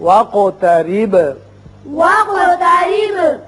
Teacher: قاف پر قلقلہ ادا ہوگا اور با پر بھی